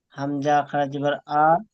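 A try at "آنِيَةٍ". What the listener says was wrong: টান দেন। টান দেন, হামজা খাড়া জবর আ, টান দিয়ে বলেন।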